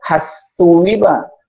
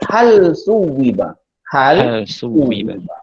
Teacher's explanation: Dimatikan lam dan dibunyikan huruf sa. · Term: izhar